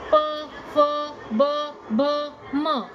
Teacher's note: मुखाचा भाग आहे ओष्ट ओष्ट म्हणजे ओठ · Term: ओष्ठ